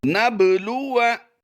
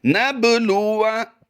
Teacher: याद रहे यहाँ पर हमने बा साकिन होने की वजह से कलकला भी ज़रूर करना है। बा हरूफ़े कलकला से है तो इसकी अदायगी कलकला करते हुए बग़ैर लंबा किए करेंगे